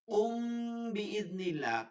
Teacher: মিম সাকিনের পরে যখনই আপনি বা দেখবেন, ওই মিমে সাকিনকে গুন্না করিয়ে পড়তে হয় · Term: ইকফাই সাফাবি